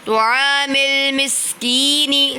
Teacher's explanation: سین پر سیٹی نکلے گی کی پر یا مدہ ہو رہا ہے.